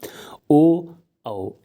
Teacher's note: ओ औ इन वर्णों का जो उच्चार स्थान होता है मित्रों वो कंठोष्ठ होता है